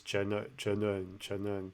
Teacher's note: And again, I'm hearing a lot of aspiration, but it's not actually an aspirated letter.